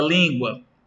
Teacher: Por exemplo, aqui, ó, na palavra língua, o I recebeu o acento agudo. Portanto, na palavra língua, a vogal I tem o som aberto